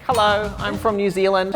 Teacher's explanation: the more strong the New Zealand accent is the more kind of nasal it gets